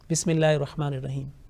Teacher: Laamul Jalala, will be pronounced with thin sound when it is preceded by a letter having a kasra